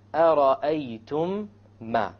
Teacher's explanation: You have once again the meme sakin followed by a meme. You merge it together and you have a ghunna. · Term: idgham shafawi